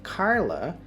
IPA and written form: ˈkɑrlə (Carla)